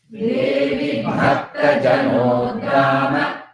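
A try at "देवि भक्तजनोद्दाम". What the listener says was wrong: Devi Bhakta Jano, you have to elongate the no. Then you get idda. And you should not make it Mahaprana like dha. It is only soft da, alpa prana da. Devi Bhakta Janodama. Devi Bhakta Janodama. Devi Bhakta Janodama.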